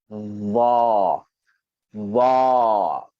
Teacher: makhraj dia adalah hujung lidah, hujung gigi atas